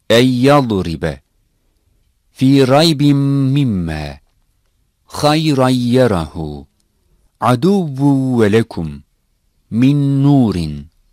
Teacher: This merging has to be done with gunna, a sound that comes from nasal area. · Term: Idgame Ma'al Ghunna